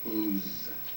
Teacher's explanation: the apostrophe s for is would be voiced